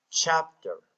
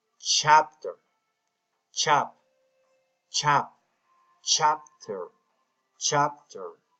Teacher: The first syllable, chap, will be pronounced louder than the last syllable, ter. In the word chapter, we make the stress on the first syllable.